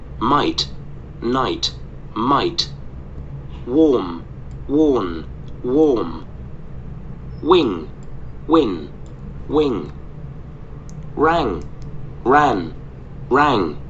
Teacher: was the n Sound now we're going to compare them and see the contrast between meh stopping the air right at your lips and NE stopping the sound stopping the air a little behind your teeth